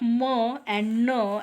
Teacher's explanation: we can examine that the air is released through the nose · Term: nasal